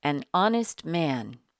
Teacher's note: here the H is silent so the first sound we hear is a vowel sound